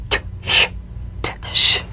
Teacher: J the unvoiced tongue point plus tongue blade as sound consonant placed the tongue firmly on the upper gum Ridge for the T then crashed through gently but sharply with the sh